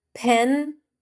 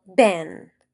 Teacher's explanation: So it's pen, not Ben. The puff of air makes it sound English.